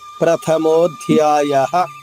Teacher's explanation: విసర్గ ఉచ్చారణ అ చెప్పాలి హ్రస్వంగా దీర్ఘం రాకూడదు ప్రథమోధ్యాయః ఇలా రాకూడదు ప్రథమోధ్యాయః సడన్ బ్రేక్ వేసినట్టుగా ఆగిపోవాలి. మరొక్కసారి ఓం శ్రీ